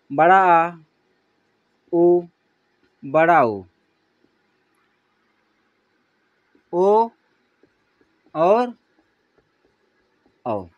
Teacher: जीभ के पिछले भाग से स्वर की जो ध्वनि निकलती है उसे हम बोलते हैं पश्च स्वर